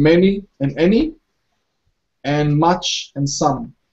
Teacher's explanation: they're quite relaxed vowels, and they're very short when you're pronouncing these words